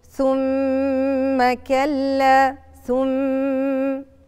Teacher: ميم ساكنة وميم متحركة يتضموا الاتنين مع بعض يبقوا مشددتين، يبقى الحكم بتاع الميم المشددة زي حكم النون المشددة الغنة